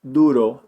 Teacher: when it's at the beginning of the word Duro they put their tongue on the back of their teeth